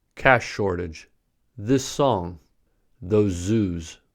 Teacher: the consonant is not pronounced twice but held for a longer duration than usual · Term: consonant lengthening